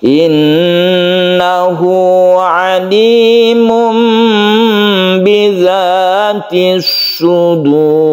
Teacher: Nah, sudur ini roknya dibaca tebal, jadi ini agak mencucu ya. Bibir kita itu agak monyong atau mencucu untuk menyempurnakan ro ini dibaca tebal, karena ro ini sebelumnya ada dhammah, maka dia itu dibaca tebal.